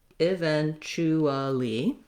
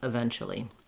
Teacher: we kind of reduce that and take out that ooh sound